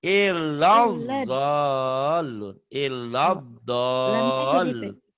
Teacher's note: Lanya jadi pendek karena ketemu huruf bertasydid.